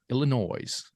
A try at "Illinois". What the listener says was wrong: Illinois. There's an S. Don't say the S. You don't say the S.